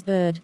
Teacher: pronounced in the central part of the vocal tract with the tongue partly opened and the lips in an unrounded position